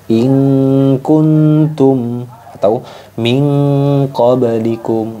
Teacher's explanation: nun sukunnya cenderung bunyi ang. Jadi cuma dua huruf ini saja yang bunyinya ang, qaf dan kaf. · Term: ikhfa abad